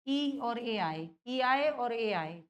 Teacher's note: जिह्वा का जो आगे का हिस्सा है, इससे आपकी दोनों ई बोली जाती हैं और ए बोले जाते हैं